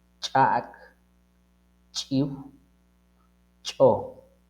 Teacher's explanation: Lo pronunciamos en la lámina de la lengua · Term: compuesta glotalizada